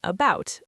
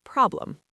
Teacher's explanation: the schwa is the most common vowel sound in English. It's that soft neutral uh sound like the a in about or the e in problem